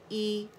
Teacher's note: Lower जा एक count के लिए नीचे ड्रॉप हो गया, और जो ज़बान का दरमियानी हिस्सा है वो रेज़ हो गया। इसमें रेस्टिंग पोजीशन में होती है हमारी ज़बान, ठीक है। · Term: कसरा